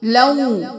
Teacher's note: मालन मालन मालन, वाव के ऊपर तशदीद है, 2 मरतबा अदा करेंगे, एक को लाम 2 ज़बर के साथ लऊ और फिर दोबारा वा, लऊ वा। जब लाम 2 ज़बर के साथ वाव को मिलाएंगे तो वाव की आवाज आएगी लऊ, वाव होंठ गोल होंगे